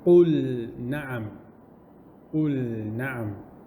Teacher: The lam is to be pronounced clearly without any mixing going on. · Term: Idhar